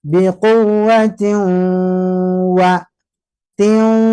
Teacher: Jadi nahan bibir monyong karena siap menyebut wau dan juga masuk hidung. Tapi saat menyebut wau, wa-nya berikutnya tidak boleh masuk hidung. Jadi hanya saat mau masuk saja, tapi saat sepenuhnya diucapkan maka tidak boleh disertai hidung.